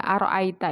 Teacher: itu rnya dibaca tebal atau tafkim